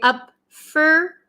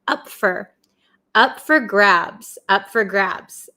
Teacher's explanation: So we usually say up for. Usually in American English, this for turns to fur